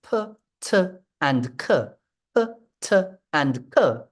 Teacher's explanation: you should feel that there's this burst of air with p and c · Now, if you place your hand, so if you place the back of your hand in front of your mouth, and you pronounce the sounds p, t, and k, p, t, and k, you should feel that there's this burst of air with p, t, and k. And if you try instead, there's a stream of air, but it's not the burst that you get with p, t, and k. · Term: plosives